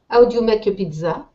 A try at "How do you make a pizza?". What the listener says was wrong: Good. Perfect.